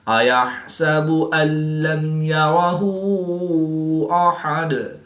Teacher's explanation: نون ساکن کے بعد لام حروف یرملون میں سے ہے تو یہاں پر ادغام بلا غنہ ہوگا یعنی کہ بغیر غنہ کر کے ادغام کریں گے۔ · میم ساکن کے بعد حرف با اور میم کے علاوہ حرف یا ہے تو یہاں پر اظہار شفوی ہوگا یعنی غنہ نہیں کریں گے بلکہ میم ساکن کو ظاہر کر کے پڑھیں گے۔